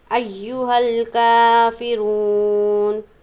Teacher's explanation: ہاں کو لام کے ساتھ ملائیں گے، یہ الف نہیں پڑھا جائے گا۔ کاف پر کھڑا زبر ہے اس لیے 1 الف کی مقدار ہم کھینچیں گے۔